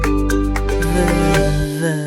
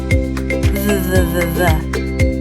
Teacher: Put your top teeth gently on your bottom lip. Now let the sound buzz. V. Great job! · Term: V sound